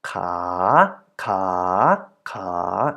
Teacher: it's a natural tone in a living syllable is not neutral or middle but it's a rising tone